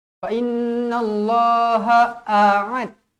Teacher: Satu hamzah, satu ain. Jangan dua-dua hamzah, jangan dua-dua ain.